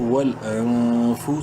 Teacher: نون ساکن کے بعد فا حروف حلقی میں سے نہیں ہے, اخفا کریں گے اس نون میں